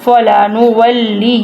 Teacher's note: نون کے اوپر تشدید ہے، تو اس لیے ہم نے ناک میں سے آواز نکالنی ہے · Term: گنہ